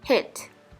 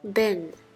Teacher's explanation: When you look in the mirror while saying the word hit, which is a short I sound, you'll notice that your mouth is relaxed and not spreading sideways